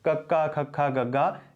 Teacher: ਜਿਵੇਂ ਜਿਹੜੀ ਕੱਕੇ ਤੋਂ ਜਿਹੜੀ ਪੰਕਤੀ ਸ਼ੁਰੂ ਹੁੰਦੀ ਹੈ ਉਸ ਨੂੰ ਅਸੀਂ ਕੰਠ ਹੀ ਕਹਿੰਦੇ ਹਾਂ, ਉਹਦਾ ਉਚਾਰਨ ਸਾਡੇ ਕੰਠ ਚੋਂ, ਸਾਡੇ ਸੰਘ ਦੇ ਵਿੱਚੋਂ ਹੁੰਦਾ ਹੈ।